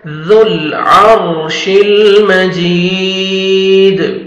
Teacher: दाल पे जब स्टॉप करेंगे दाल साकिन हो जाएगा, कलकला करेंगे, डबल साउंड आएगा